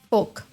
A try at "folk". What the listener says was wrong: the L. Don't pronounce the L.